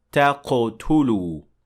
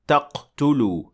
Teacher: Next is the word تقتلوا, and in this word we see قلقلة, because قاف in this case has sukun, so it has to receive قلقلة